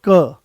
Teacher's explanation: कोई ज्यादा जोर नहीं लगाना पड़ा आराम से वो आ गया है कम कम प्राणवायु की आवश्यकता पड़ी।